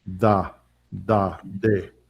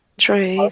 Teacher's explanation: the tip of your tongue touches the tooth on the D in Spanish, also for the T. Okay? Okay. But the tongue position for the T and the D in English is different. It's behind the tooth. So for a word like trade, we never touch your tooth.